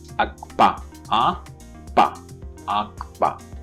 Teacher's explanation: So here ka and pa are doubly articulated